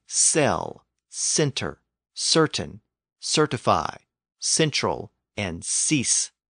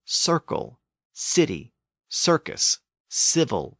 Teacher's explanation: so on so we have the S sound so over time people tended to move that k sound from the throat to the front of the mouth